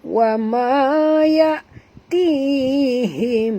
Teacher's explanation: Tihim, ti ma asli, ha sini ha simpul, bunyikan betul-betul him, datang pada halkum ya. Mim mati bertemu mim, idgham mislain, wajib dengung kat sini ya, dua harakat ya